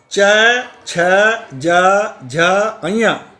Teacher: ये तालु की मदद से बोले जाते हैं। इन शब्दों में जो ध्वनि उत्पन्न होती है वो तालु की मदद से उत्पन्न होती है।